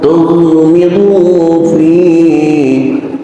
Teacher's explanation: Kena ghin bukan huruf qalqalah. Bacalah tanpa pantulan qalqalah